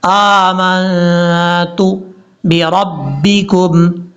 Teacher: حمزہ کے اوپر کھڑا زبر ہونے کی وجہ سے لمبا کریں گے